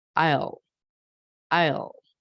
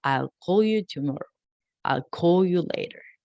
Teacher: a l sound that is produced by the back of a tongue your tongue comes back like a wheel sounds like i'll i'll